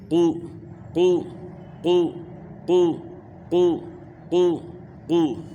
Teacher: ہونٹوں کے ذریعے جو ہے نا موٹا کرنا یہ غلط ہے، چینجنگ آ جاتی ہے، واو پیدا ہو جاتا ہے۔ تو آپ نے جو ہے نا ابھی پیش کے ساتھ قاف کی پریکٹس کرنی ہے، تو یہ جو ہونٹ گول ہوں گے پیش کی وجہ سے صرف، باقی جو ہے نا قاف کو اپنے مخرج سے آپ نے ادا کرنا ہے، اسی طرح موٹا کرنا ہے۔